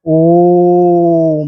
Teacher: वैसा स्वर जिसके उच्चारण में 2 मात्रा से अधिक का समय लगे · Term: पुलुप्त स्वर